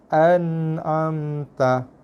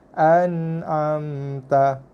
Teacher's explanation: Okey, kemudian ada bunyi sikit. Lepas tu mim, tutup mulut, dua bibir atas bibir bawah kena sentuh, tutup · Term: mim mati